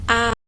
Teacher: terjadi apabila lidah berada dalam posisi serendah mungkin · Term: terbuka